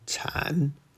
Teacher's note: Third tone, chan, to give birth.